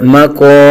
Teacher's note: قوف حرف مستعلیہ میں سے ہے، پر پڑھیں گے اور ایک الف تک کھینچ کر پڑھیں گے